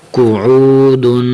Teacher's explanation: قاف پیش قو، عین واو پیش عو، قوعو، دال دو پیش دن، قعودن۔ قاف کو موٹا کرنا ہے، عین کی آواز نکالنی ہے، قعودن، دال کے اوپر یہ دو زبانیں تنوین ہے، قعودن۔